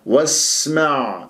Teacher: من الواو إلى السين لدينا همزة وصل، والسين من أحرف الصفير، سين فيها جريان للصوت جريان للنفس، يعني رخاوة وهمس